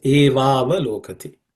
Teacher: The va and a together join and becomes va. The va becomes a longer vowel. It takes on a longer vowel and becomes va.